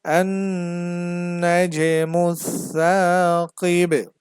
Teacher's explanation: যদি থামি তাহলে, যদি থেমে যাই তাহলে হবে النجم الثاقب, কলকলা হবে কারণ যে হরফে থামা হয় ওই হরফটা জজম হয়ে যায়, আর বায়ে জজম হলে এখানে কলকলা করতে হয় কারণ হচ্ছে বাটা হচ্ছে কলকলার হরফ